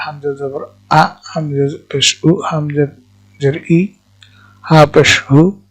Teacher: কণ্ঠনালীর নিম্নভাগ থেকে উচ্চারিত হয় 2টি হরফ, এগুলো হলো হামজা হা